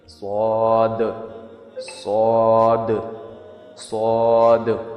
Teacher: سواد کو کہتے ہوئے جب ہم دال لاسٹ میں نکالتے ہیں تو دال میں ہلکی سی مائلڈ قلقلہ بھی ہم کرتے ہیں